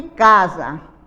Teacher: Casa nós sabemos que é com a letra S, mas na nossa pronúncia é com Z